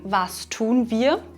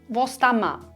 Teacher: Hier sehen wir 2 typische Phänomene in unserem Dialekt. Erstens verschmelzen wir das Verb mit dem Pronomen wir. Und zweitens sagen wir zum Pronomen wir im Dialekt sehr oft ma. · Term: Verschmelzungen